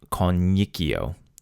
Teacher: the standard pronunciation involves two I's. One's a consonant followed by a vowel. · The syllable before this kind of double i sound is long.